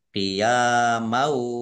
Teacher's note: Fathah tanwin bertemu dengan huruf wau bacaan idgham bi gunnah masuk dengan mendengung yaitu mendengung wau ditandai wawunya ada tasdidnya.